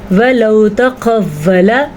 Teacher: قاف کو ہم موٹا کر کے پڑھیں گے کیونکہ یہ موٹا قاف ہے، حروف مستعلیہ میں شامل ہے